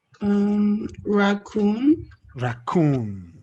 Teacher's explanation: Now, the stress is on the coon.